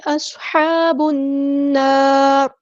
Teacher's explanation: ہا کو وسطی حلق مڈل تھروٹ سے ادا کرنا ہے، ہا پہ کھڑا زبر ہے تو مد اصلی کریں گے. با کو ہم نے نون کے ساتھ ملا دینا ہے، اور حمزۃ الوصل ہمارا ڈراپ ہو جائے گا